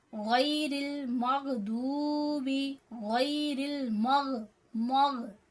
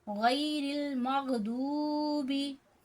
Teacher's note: गैन हमारा हलक के ऊपर वाले हिस्से से अदा हो रहा है, गैरिल मगदूबी। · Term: गैन का मखरज